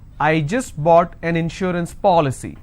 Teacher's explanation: I need to stress on the third from right which means I will stress on Paw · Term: anti-penultimate